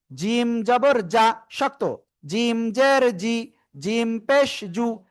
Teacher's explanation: জিহ্বার মধ্যখান, তার বরাবর উপরে তালুর সাথে লাগাবো, লাগিয়ে 1 2 3 3 আলিফ টেনে পড়বো আমরা ইনশাআল্লাহ।